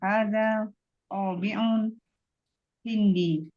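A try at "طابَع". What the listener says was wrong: Bil fathah. Tabaun. Ada tabaun hindi.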